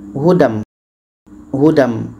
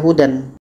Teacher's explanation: Tanwin bertemu dengan mim hukumnya idgham bighunah. Kita masukkan bunyi tanwin kepada mim.